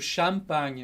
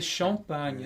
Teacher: Só que a gente em italiano fala bem aberto, champagne, mas em francês é champagne, é mais nasal, né? É esse on. E em português também tem muitas nasais, com ão e...